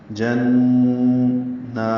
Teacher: نون مشدد پہ غنہ ہوگا، نون کو 2 حرکات لمبا کریں گے، 2 حرکات آواز کو ناک کے بانسے میں روکیں گے. جنّا، یہ لمبا ہے، 2 حرکات.